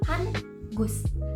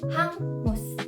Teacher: H, A, Eng, U, dan S. 2 fonem ini disatukan di dalam satu bunyi. N dan G menjadi satu bunyi, yaitu eng.